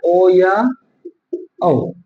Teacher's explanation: ओ या औ इनको बोल के देख लो आपका मुह भी गोल हो जाएगा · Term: वृताकार